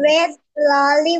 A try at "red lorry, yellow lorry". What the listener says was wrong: লরি, হ্যাঁ, ললি বলা যাবে না, লরি, রেড লরি, yellow লরি। রেড লরি yellow লরি, রেড লরি yellow লরি।